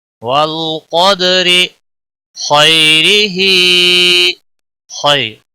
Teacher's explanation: یا ساکن یہاں پر یالین بنتا ہے، اور نرمی کے ساتھ کھینچ کر پڑھیں گے